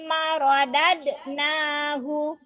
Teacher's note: Nah, dalnya itu harus dipantulkan. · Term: qalqalah